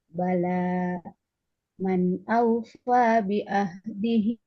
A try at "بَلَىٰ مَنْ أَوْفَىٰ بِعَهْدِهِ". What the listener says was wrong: Bi'ah, huruf ainnya jangan seperti hamzah. Bala man awfa bi'ahdihi.